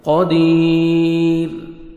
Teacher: را ساکن جب سٹاپ کریں گے اس سے پہلے دیکھیں یا سے پہلے زیر ہے، را ساکن سے پہلے یا ہے، یا ساکن، تو را کو ہم باریک پڑھیں گے. قدیر، रॉ साकिन से पहले या साकिन है तो आपने रॉ को बारीक पढ़ना है · شیء قدیر، قاف کو موٹا کر کے پڑھیں گے. یا مدہ 1 سیکنڈ میں دال کو کھینچنا ہے. را ساکن جب سٹاپ کریں گے اس سے پہلے دیکھیں یا سے پہلے زیر ہے، را ساکن سے پہلے یا ہے، یا ساکن، تو را کو ہم باریک پڑھیں گے.